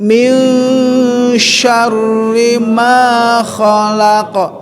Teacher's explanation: jadi dengung aja karena masuk kepada ikhfa. Minimal 2 ketukan sampai 3 ya, al khayshum, rongga hidung.